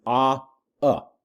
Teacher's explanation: in the form atma the first ah is long and the second one is short